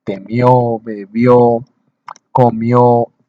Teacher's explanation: Este tipo de palabras se les marca el acento en la última sílaba